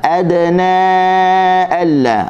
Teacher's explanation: Adna huruf dal hujung lidah digusi, pastikan berada di situ. Ada dan lepaskan qalqalah.